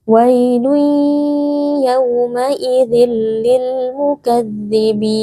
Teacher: ada tanwin bertemu dengan huruf lam hukumnya adalah idgham bila ghunah kita memasukkan tanwin ke dalam lam lalu dibaca tanpa berdengung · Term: idgham bila gunnah